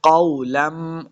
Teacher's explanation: میم مشدد ہے، غنہ کے ساتھ پڑھنا ہے